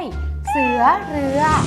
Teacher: สระเอือเป็นสระประสมเสียงยาว